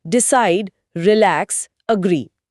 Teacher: वहां जोर दूसरे शब्दांश पर होता है।